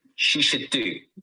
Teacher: should needs to be pronounced together with she and do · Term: weak forms